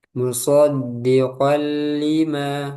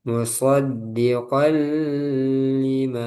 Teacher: Lam atau ro. Cara membacanya diidgamkan atau dimasukkan ke dalam huruf berikutnya tanpa ghunah. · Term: idgham bila ghunah